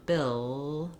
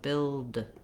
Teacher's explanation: It's just when I say the L sound, bill, the sound can continue, air flows on the sides of my tongue, and then when I finish it with the D, my tongue seals off and the air bursts out. Build. So that's how the L and the D are different.